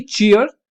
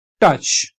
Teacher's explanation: दूसरा होता है आपका टी और ट और श की आवाज को मिलके बना होता है